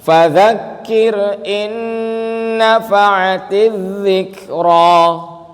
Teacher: Nun tasdid hukumnya gunnah. Agak panjang.